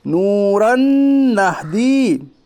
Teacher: वाव मद्दा को एक अलिफ के बराबर खींच कर पढ़िए। रॉ के ऊपर दो ज़बर की तनवीन है, दो ज़बर की तनवीन के बाद हरूफ यौमिन के 4 हरफों में से नून है, इसलिए इदगाम नाकिस होगा, यानी मिलाकर गुन्ना के साथ पढ़िए।